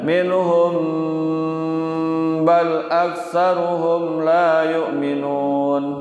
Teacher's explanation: Kalau ikhfa syafawi mim mati bertemu dengan ba, namanya ikhfa syafawi. Baca mendengung juga